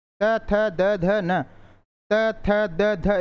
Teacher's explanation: जब आप बोलते हो तो जीभ का जो भाग है वह आगे दांतों से टकरा रहा है। इसीलिए इसको दंत्य बोलते हैं।